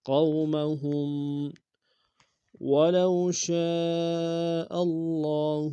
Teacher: ولو میں واولین ہے بغیر کھینچ پڑیں گے، شین کی سالف مدہ المدہ کی مدہ متصل ہے، کم سے کم 3 اور زیادہ زیادہ سادہ الف میں کھینچیں گے۔